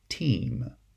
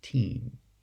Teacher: But in this case, if I have a it's going to be following a segment that is greater sonority. Now, the vocalic approximant is the sonority peak. And so it's going to be pronounced E, as in the word team.